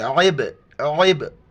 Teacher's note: عین کو گلے سے ادا کرنا ہے اور با کے ساتھ ملاتے ہوئے کلکلا کرنا ہے